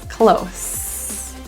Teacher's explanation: The S in close is pronounced as an S. It's voiceless. Close. But when we use this word as in the verb close the door, then that S is pronounced as a Z.